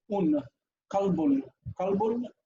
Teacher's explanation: So they would add n to the end of a word that isn't really written, like this word kalb. Kalb means dog, but the little swirly thing on the end, the swirly like that, it means kalbun. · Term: lunation